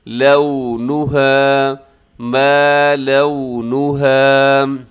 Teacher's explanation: اسے لام زبر واو لو، اسے لاؤ نہیں پڑھنا، لونها یہ درست نہیں ہے، لونها ما لونها۔